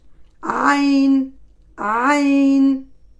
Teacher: elle sort du milieu de la gorge